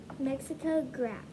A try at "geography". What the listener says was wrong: It's not graph. It has the word graph in it, but it is not graph. Graph is right in the middle, but there's lots of other letters in it. Geography.